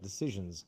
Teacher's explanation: Cut it because you're saying it sounds like an S. You need to make a Z and cut it short.